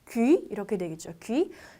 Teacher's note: 모양만 우고 소리는 이를 뱉어주세요